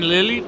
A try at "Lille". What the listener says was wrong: It's not Lily.